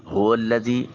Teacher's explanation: ہا کو اقصا حلق سے ادا کریں گے، واو کو لام کے ساتھ ملائیں گے، اور یا ساکن اور اس سے پہلے والے حرف ذال کے نیچے زیر ہے۔